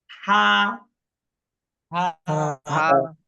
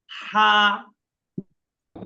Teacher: কৌশলটা হলো যে আগে বাতাস বের হবে, আগে বাতাস বের হবে, তারপরে হা আওয়াজটা বের হবে।